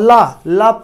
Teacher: जब ला का उच्चारण करते हैं तो हमारी जो है जीभ के दोनों तरफ से हवा अंदर प्रवेश करती है, इसलिए इसे पार्श्व कहते हैं।